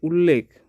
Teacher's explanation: পরবর্তীতে ল রয়েছে, লয়ের প্রভাব রয়েছে, তাই এটা হয়ে যাবে পরাগত সমীভবন।